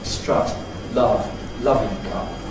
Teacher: Most people now have a sort of central vowel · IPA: ɐ